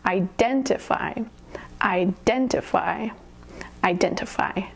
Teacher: Emphasis on the second syllable.